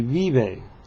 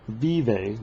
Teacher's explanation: Not teeth to lips, though. Not vive, like we do with our V, but lip to lip, but some air coming through. Vive makes it a softer sound.